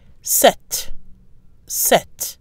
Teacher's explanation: The pronunciation of the number 7 remains the same in all cases, with a silent P and a pronounced T.